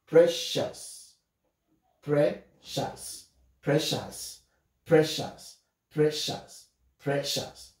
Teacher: Let's underline IOU, and it makes the sound O, which is a schwa.